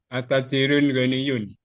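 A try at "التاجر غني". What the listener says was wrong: Nah, kalau ditambah alif lam maka dia tidak ada tanwin ya. At-tajiru ghaniyun. At-tajiru ghaniyun. Nah, bukan at-tajirun. At-tajiru ghaniyun.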